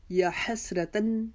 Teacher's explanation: یا کے اوپر کھڑا زبر 1 الف کی جتنا لمبا کھینچیں گے